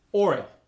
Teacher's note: the oi sound like oil gets an added R